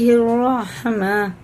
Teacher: بڑا ہائے حلق سے نکالیں گے، بیچ میں سے ایک دم حلق کے